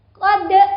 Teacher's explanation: Laqad itu adalah bacaan qalqalah, jadi boleh ada tambahan E